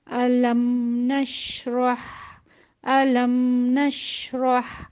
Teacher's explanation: میم کو ساکن کریں گے تو اس میں بھی ہم توسط کی صفت کو ضرور شامل کریں گے کہ تھوڑی سی آواز ہماری رکنے کے بعد بھی چلتی رہے، اور جب چلے تو پھر ہلکا سا غنہ بھی اس میں شامل ہوگا، کیونکہ میم کی جو ایک صفت ہے نا کہ جو اس حرف سے جڑی ہوئی ہے وہ غنہ بھی ہے، تو اس کو اس طرح سے ادا کریں گے۔